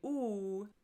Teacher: And you'll notice if you think about it when you say ooh, the tip of your tongue is kind of tucked back here, but the back of your tongue is bunched up at the top of your mouth in the back of your mouth. So when you say ooh, it's high in the back of your mouth.